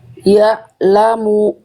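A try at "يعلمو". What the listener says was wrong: Itu putus. Ya lamu, jangan putus. Ya lamu. Di sini ain sukunnya harus diantar bunyinya sampai ketemu huruf la-nya.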